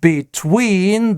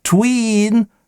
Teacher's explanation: Обратите внимание, что between и долгое во втором слоге, а twins краткое.